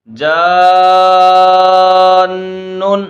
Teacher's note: نون جو ہے یہ اس پر تشدید بھی ہے تو نون مشدد ہے، تو یہاں پر غنہ بھی کریں گے